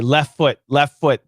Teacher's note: kill the t it's gone